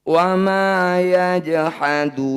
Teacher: jim sukun disebut qalqalah harus dipantulkan. Karena posisinya di tengah, pantulannya dialirkan saja. Namanya qalqalah sugro.